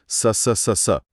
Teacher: जब इन हुरूफ को सही तरीके से अदा किया जाता है तो हवा जबान की नोक और सामने के दांतों के बीच से इतनी तेजी से गुजरती है कि एक तेज सीटी जैसी आवाज पैदा होती है। तो यह एक किस्म का बिल्ट इन साउंड इफेक्ट है। · ہوا زبان کی نوک اور سامنے کے دانتوں کے بیچ سے اتنی تیزی سے گزرتی ہے کہ ایک تیز سیٹی جیسی آواز پیدا ہوتی ہے